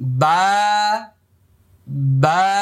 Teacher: এক আলিফ পরিমাণ লম্বা হবে, মুখটা খালি ফাঁকা হবে।